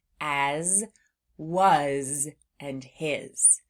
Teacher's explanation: Sometimes in words that sound like floss words, they end in what sounds like a Z sound, but it's actually being spelled with an S